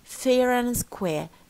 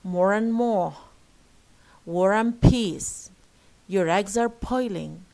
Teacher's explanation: They retain the first R because it's followed by a vowel. Okay, a word starting with a vowel. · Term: linking R